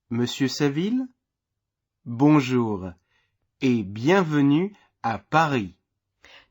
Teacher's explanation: note the rising intonation at the end of the name m listen again and in the pause copy that Rising intonation